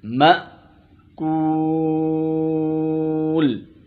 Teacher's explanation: یہ حمزہ ہے اور جھٹکے سے ادا ہوگا. ماکول غلط.